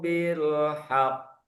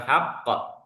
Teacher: Ha qo ditahan baru dimantulkan.